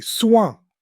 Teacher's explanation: Listen for the nasal sound at the end.